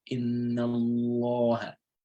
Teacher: So when a fatha comes before the word Lam in the word Allah, Inna Allah. So Lam will have a heavy sound, a heavy pronunciation structure there.